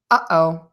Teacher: this is the sound that happens when air is stopped in your throat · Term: glottal stop